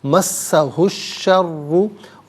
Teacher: را پر پیش ہے، را کو پر کر کے پڑھیں گے، مشدد ہے، جماؤ کے ساتھ پڑھا جائے گا